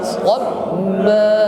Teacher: Kita tekan lalu kita panjangkan, cukup satu alif, tidak lebih.